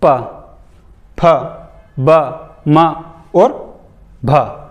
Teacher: आपके होठ एक दूसरे से टकराएंगे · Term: ओष्ठ